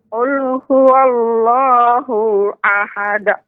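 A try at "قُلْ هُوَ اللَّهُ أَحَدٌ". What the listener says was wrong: Mohon maaf nek, ya jangan ya hu-nya dipendekkan. Ya, hu-nya dipendekkan. Dan ya nggak boleh huanya ketika wa bibir monyong terus karena udah berpindah ke huruf lam. Qul huwa waw salah. Qul huwallah waw langsung pindahkan.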